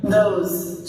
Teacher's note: we have the voiced TH here, followed by the vowel sound O. And last, the Z sound.